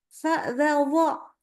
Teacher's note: Kenakan ujung lidah. Jadi bagian bawah gigi seri atas ketemu dengan ujung lidah.